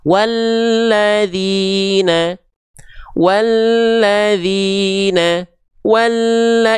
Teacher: diidegomkan dileburkan langsung masuk ke huruf lam bertasydidnya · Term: alif lam syamsiah, alif lam syamsiyah